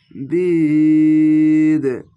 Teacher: শেষ অক্ষরে সাকিন দিয়ে বিদ এভাবে কলকলা হয়ে যাবে। তিন আলিফ টেনে বিদ এভাবে লাস্টে কলকলা হয়ে যাবে।